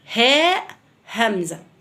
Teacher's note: نيجي المجموعة التالتة هنقسمها بقى اللي بتطلع من الحلق. أقصى الحلق بطلع الهاء والهمزة